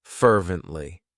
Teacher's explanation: Fervently. It has 3 syllables, and the stress is on that first syllable